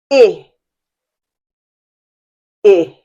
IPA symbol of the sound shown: ɪ